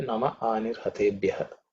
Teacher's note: the Namaha, the Visarga is actually dropped because it's followed by A. The Ha itself has been dropped.